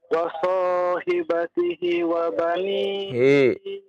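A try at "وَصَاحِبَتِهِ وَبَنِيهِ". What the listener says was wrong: Hi panjang. Wa sahibatihi. Hi 2 harokat. Hi jangan lupa panjangkan itu. Tanda panjang. Wa sahibatihi. Hi. Ya, 2 harokat.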